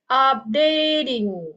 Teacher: Nah, suku kata terakhirnya adalah TING. Oke, jadi ting-nya dibaca dan menjadi ding.